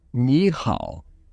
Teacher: so third third changes to second third